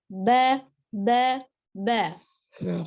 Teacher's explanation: Huruf ba kita sudah belajar dari bertemunya 2 bibir bagian dalam ya. Bertemunya bibir atas dan bibir bawah bagian dalam. Jadi tidak dilipat.